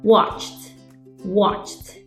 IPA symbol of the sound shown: t